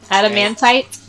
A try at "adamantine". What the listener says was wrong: No, it's adamantine, not tight. Adamantine.